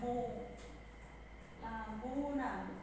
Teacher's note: Mu dibaca 2 ketuk panjangnya ya, 2 harokat. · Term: mat tabi'i